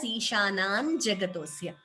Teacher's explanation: Ishanam there is an anuswara. While combining the sandhi, we chant it as Ishanan Jagatosya.